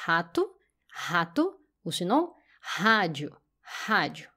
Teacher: Donc on va pas trembler la gorge, on va laisser les sons complètement dans la bouche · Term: son direct